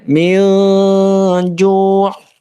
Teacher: Maka dibaca ikhfa atau samar. Yang samar adalah bunyi dari nun sukunnya jadi samar. Tadinya min jadinya min ju'.